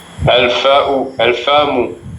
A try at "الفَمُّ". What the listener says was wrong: Actually there should be shadda here. Al-fammu. I think they forgot to put shadda here. Fammu.